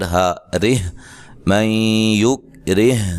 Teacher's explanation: را کو باریک پڑھنا ہے